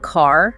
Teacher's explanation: In American English, that R is very pronounced. You really hear it. But in some other English accents, that final R might be much softer or even silent. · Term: R sound